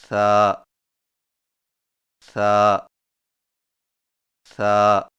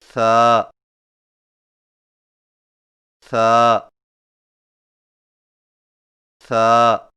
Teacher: ثا کی ادائیگی میں زبان کی نوک کو سامنے والے اوپر کے دو دانتوں کے اندرونی کناروں سے نرمی سے لگا کر باریک آواز میں پڑھیں